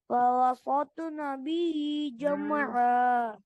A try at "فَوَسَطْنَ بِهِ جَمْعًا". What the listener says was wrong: फिर मोटा कर दिया। فوسطن به جمعا فوسطن به جمعا فوسطن